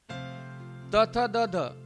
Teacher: त, थ, द, ध हे वर्ण दंत्यवर्ण आहेत. बरोबर आहे, कारण दाताला स्पर्श करूनच या ठिकाणी या वर्णांचा उच्चार होतो.